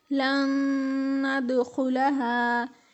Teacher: نون ساکن کے بعد نون آ رہا ہے اور یہاں پر ہم غنہ ادا کر رہے ہیں